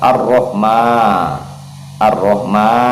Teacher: Dia dibaca tipis juga ar-roh, ar-rohma, ma masuk ke mim lagi. Ma di sini fathah berdiri sebagai pengganti dari alif, maka hukumnya kita baca mat tabi'i, baca 2 harokat